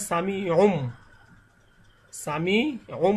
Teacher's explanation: উনকে উম অর্থাৎ মিম দ্বারা পরিবর্তন করতে হবে